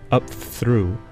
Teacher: pronunciation fricativizes the plosive p as it assimilates to the fricative th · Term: fricativization